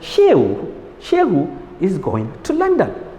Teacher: So it's a complete statement and it's a falling tone.